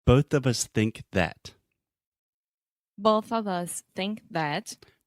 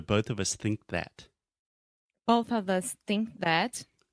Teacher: you have think and you have to make the k sound and then that immediately after